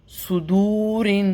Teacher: صاد whistling ہوتے ہوئے موٹا کر کے پڑھنا ہے